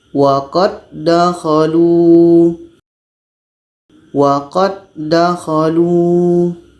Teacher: itu bunyi huruf yang pertama da ini masuk kepada huruf da yang kedua jadi bunyi qalqalahnya dihilangkan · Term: hukum Idam mutamasilan